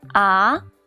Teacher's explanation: the second tone is the rising tone